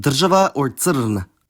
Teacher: [r] can be syllabic [r̩], like in dr̀žava or cȓn.